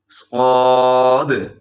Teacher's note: حرف صاد جو ہے اس کو موٹا پڑھا جاتا ہے، اس میں آپ کے ہونٹ بھی گول نہیں ہونے چاہیے، اگر باریک کریں گے تو یہ سین کے ساتھ مل جائے گا جو اس سے ایک قدم پیچھے ہے، صاد۔